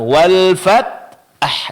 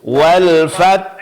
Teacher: huruf ta di sini jangan sampai mirip dengan qalqalah ya. Pertahankan sifat syiddahnya. Suara tertahan.